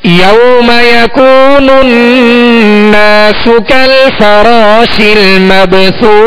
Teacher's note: غنہ ناک میں آواز لے جا کر اسے ظاہر کرنے کو کہتے ہیں غنہ. ناک میں آواز لے جا کر ایک الف کی مقدار دو حرکت کی مقدار میں آواز کو ناک میں ٹھہریں گے